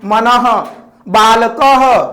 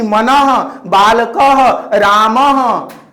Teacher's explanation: जिस ध्वनि का उच्चारण ह की तरह होता है उसे विसर्ग कहते हैं।